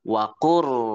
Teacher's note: Jadi kita nggak baca lamnya, bukan waqul, tapi waqur. Kita idghamkan lamnya ke ro. Dan idgham ini namanya idgham mutaqaribain.